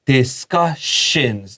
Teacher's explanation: ss 發 /ʃ/ (sh) 的音